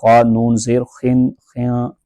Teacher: خا کو پر کر کے پڑھیں گے